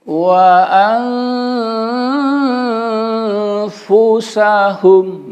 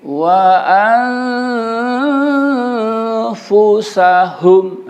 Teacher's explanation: Jadi kita menyamarkannya itu dan hunahnya itu ada di nun sukunnya. Nun sukunnya tidak boleh terdengar jelas, tidak boleh dihilangkan. Jadi harus samar-samar. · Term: ifa